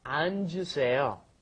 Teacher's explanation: Because it's got the double 받침 there. So you've got to go 안, and then the J sound comes up